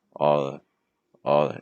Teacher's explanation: the very last word, the article, might drop a bit in pitch